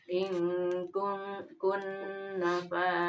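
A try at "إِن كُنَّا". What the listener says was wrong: Mana panjangkeun kunna.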